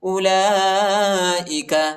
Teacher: لام پر کڑا زبر اور بڑا مد ہے۔ اس کو تقریباً 3-4 سیکنڈ تک کھینچیں گے